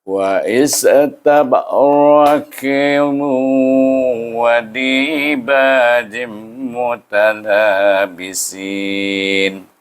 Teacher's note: Ini qaf dan tanwin bertemu dengan waw. Jadi kita baca dengan idgham ma'al gunnah.